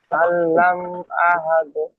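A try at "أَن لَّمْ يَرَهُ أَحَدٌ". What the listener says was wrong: ইয়ারা, ইয়ারা টান দিচ্ছেন, ইয়ারাহু টান হবে। ইয়ারাহু, হুরে টান হবে। ইয়ারাহু আহাদ।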